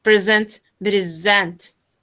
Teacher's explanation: because there's a difference between the noun and a verb okay a verb means that we have to stress the second syllable but uh on the noun we have to stress the first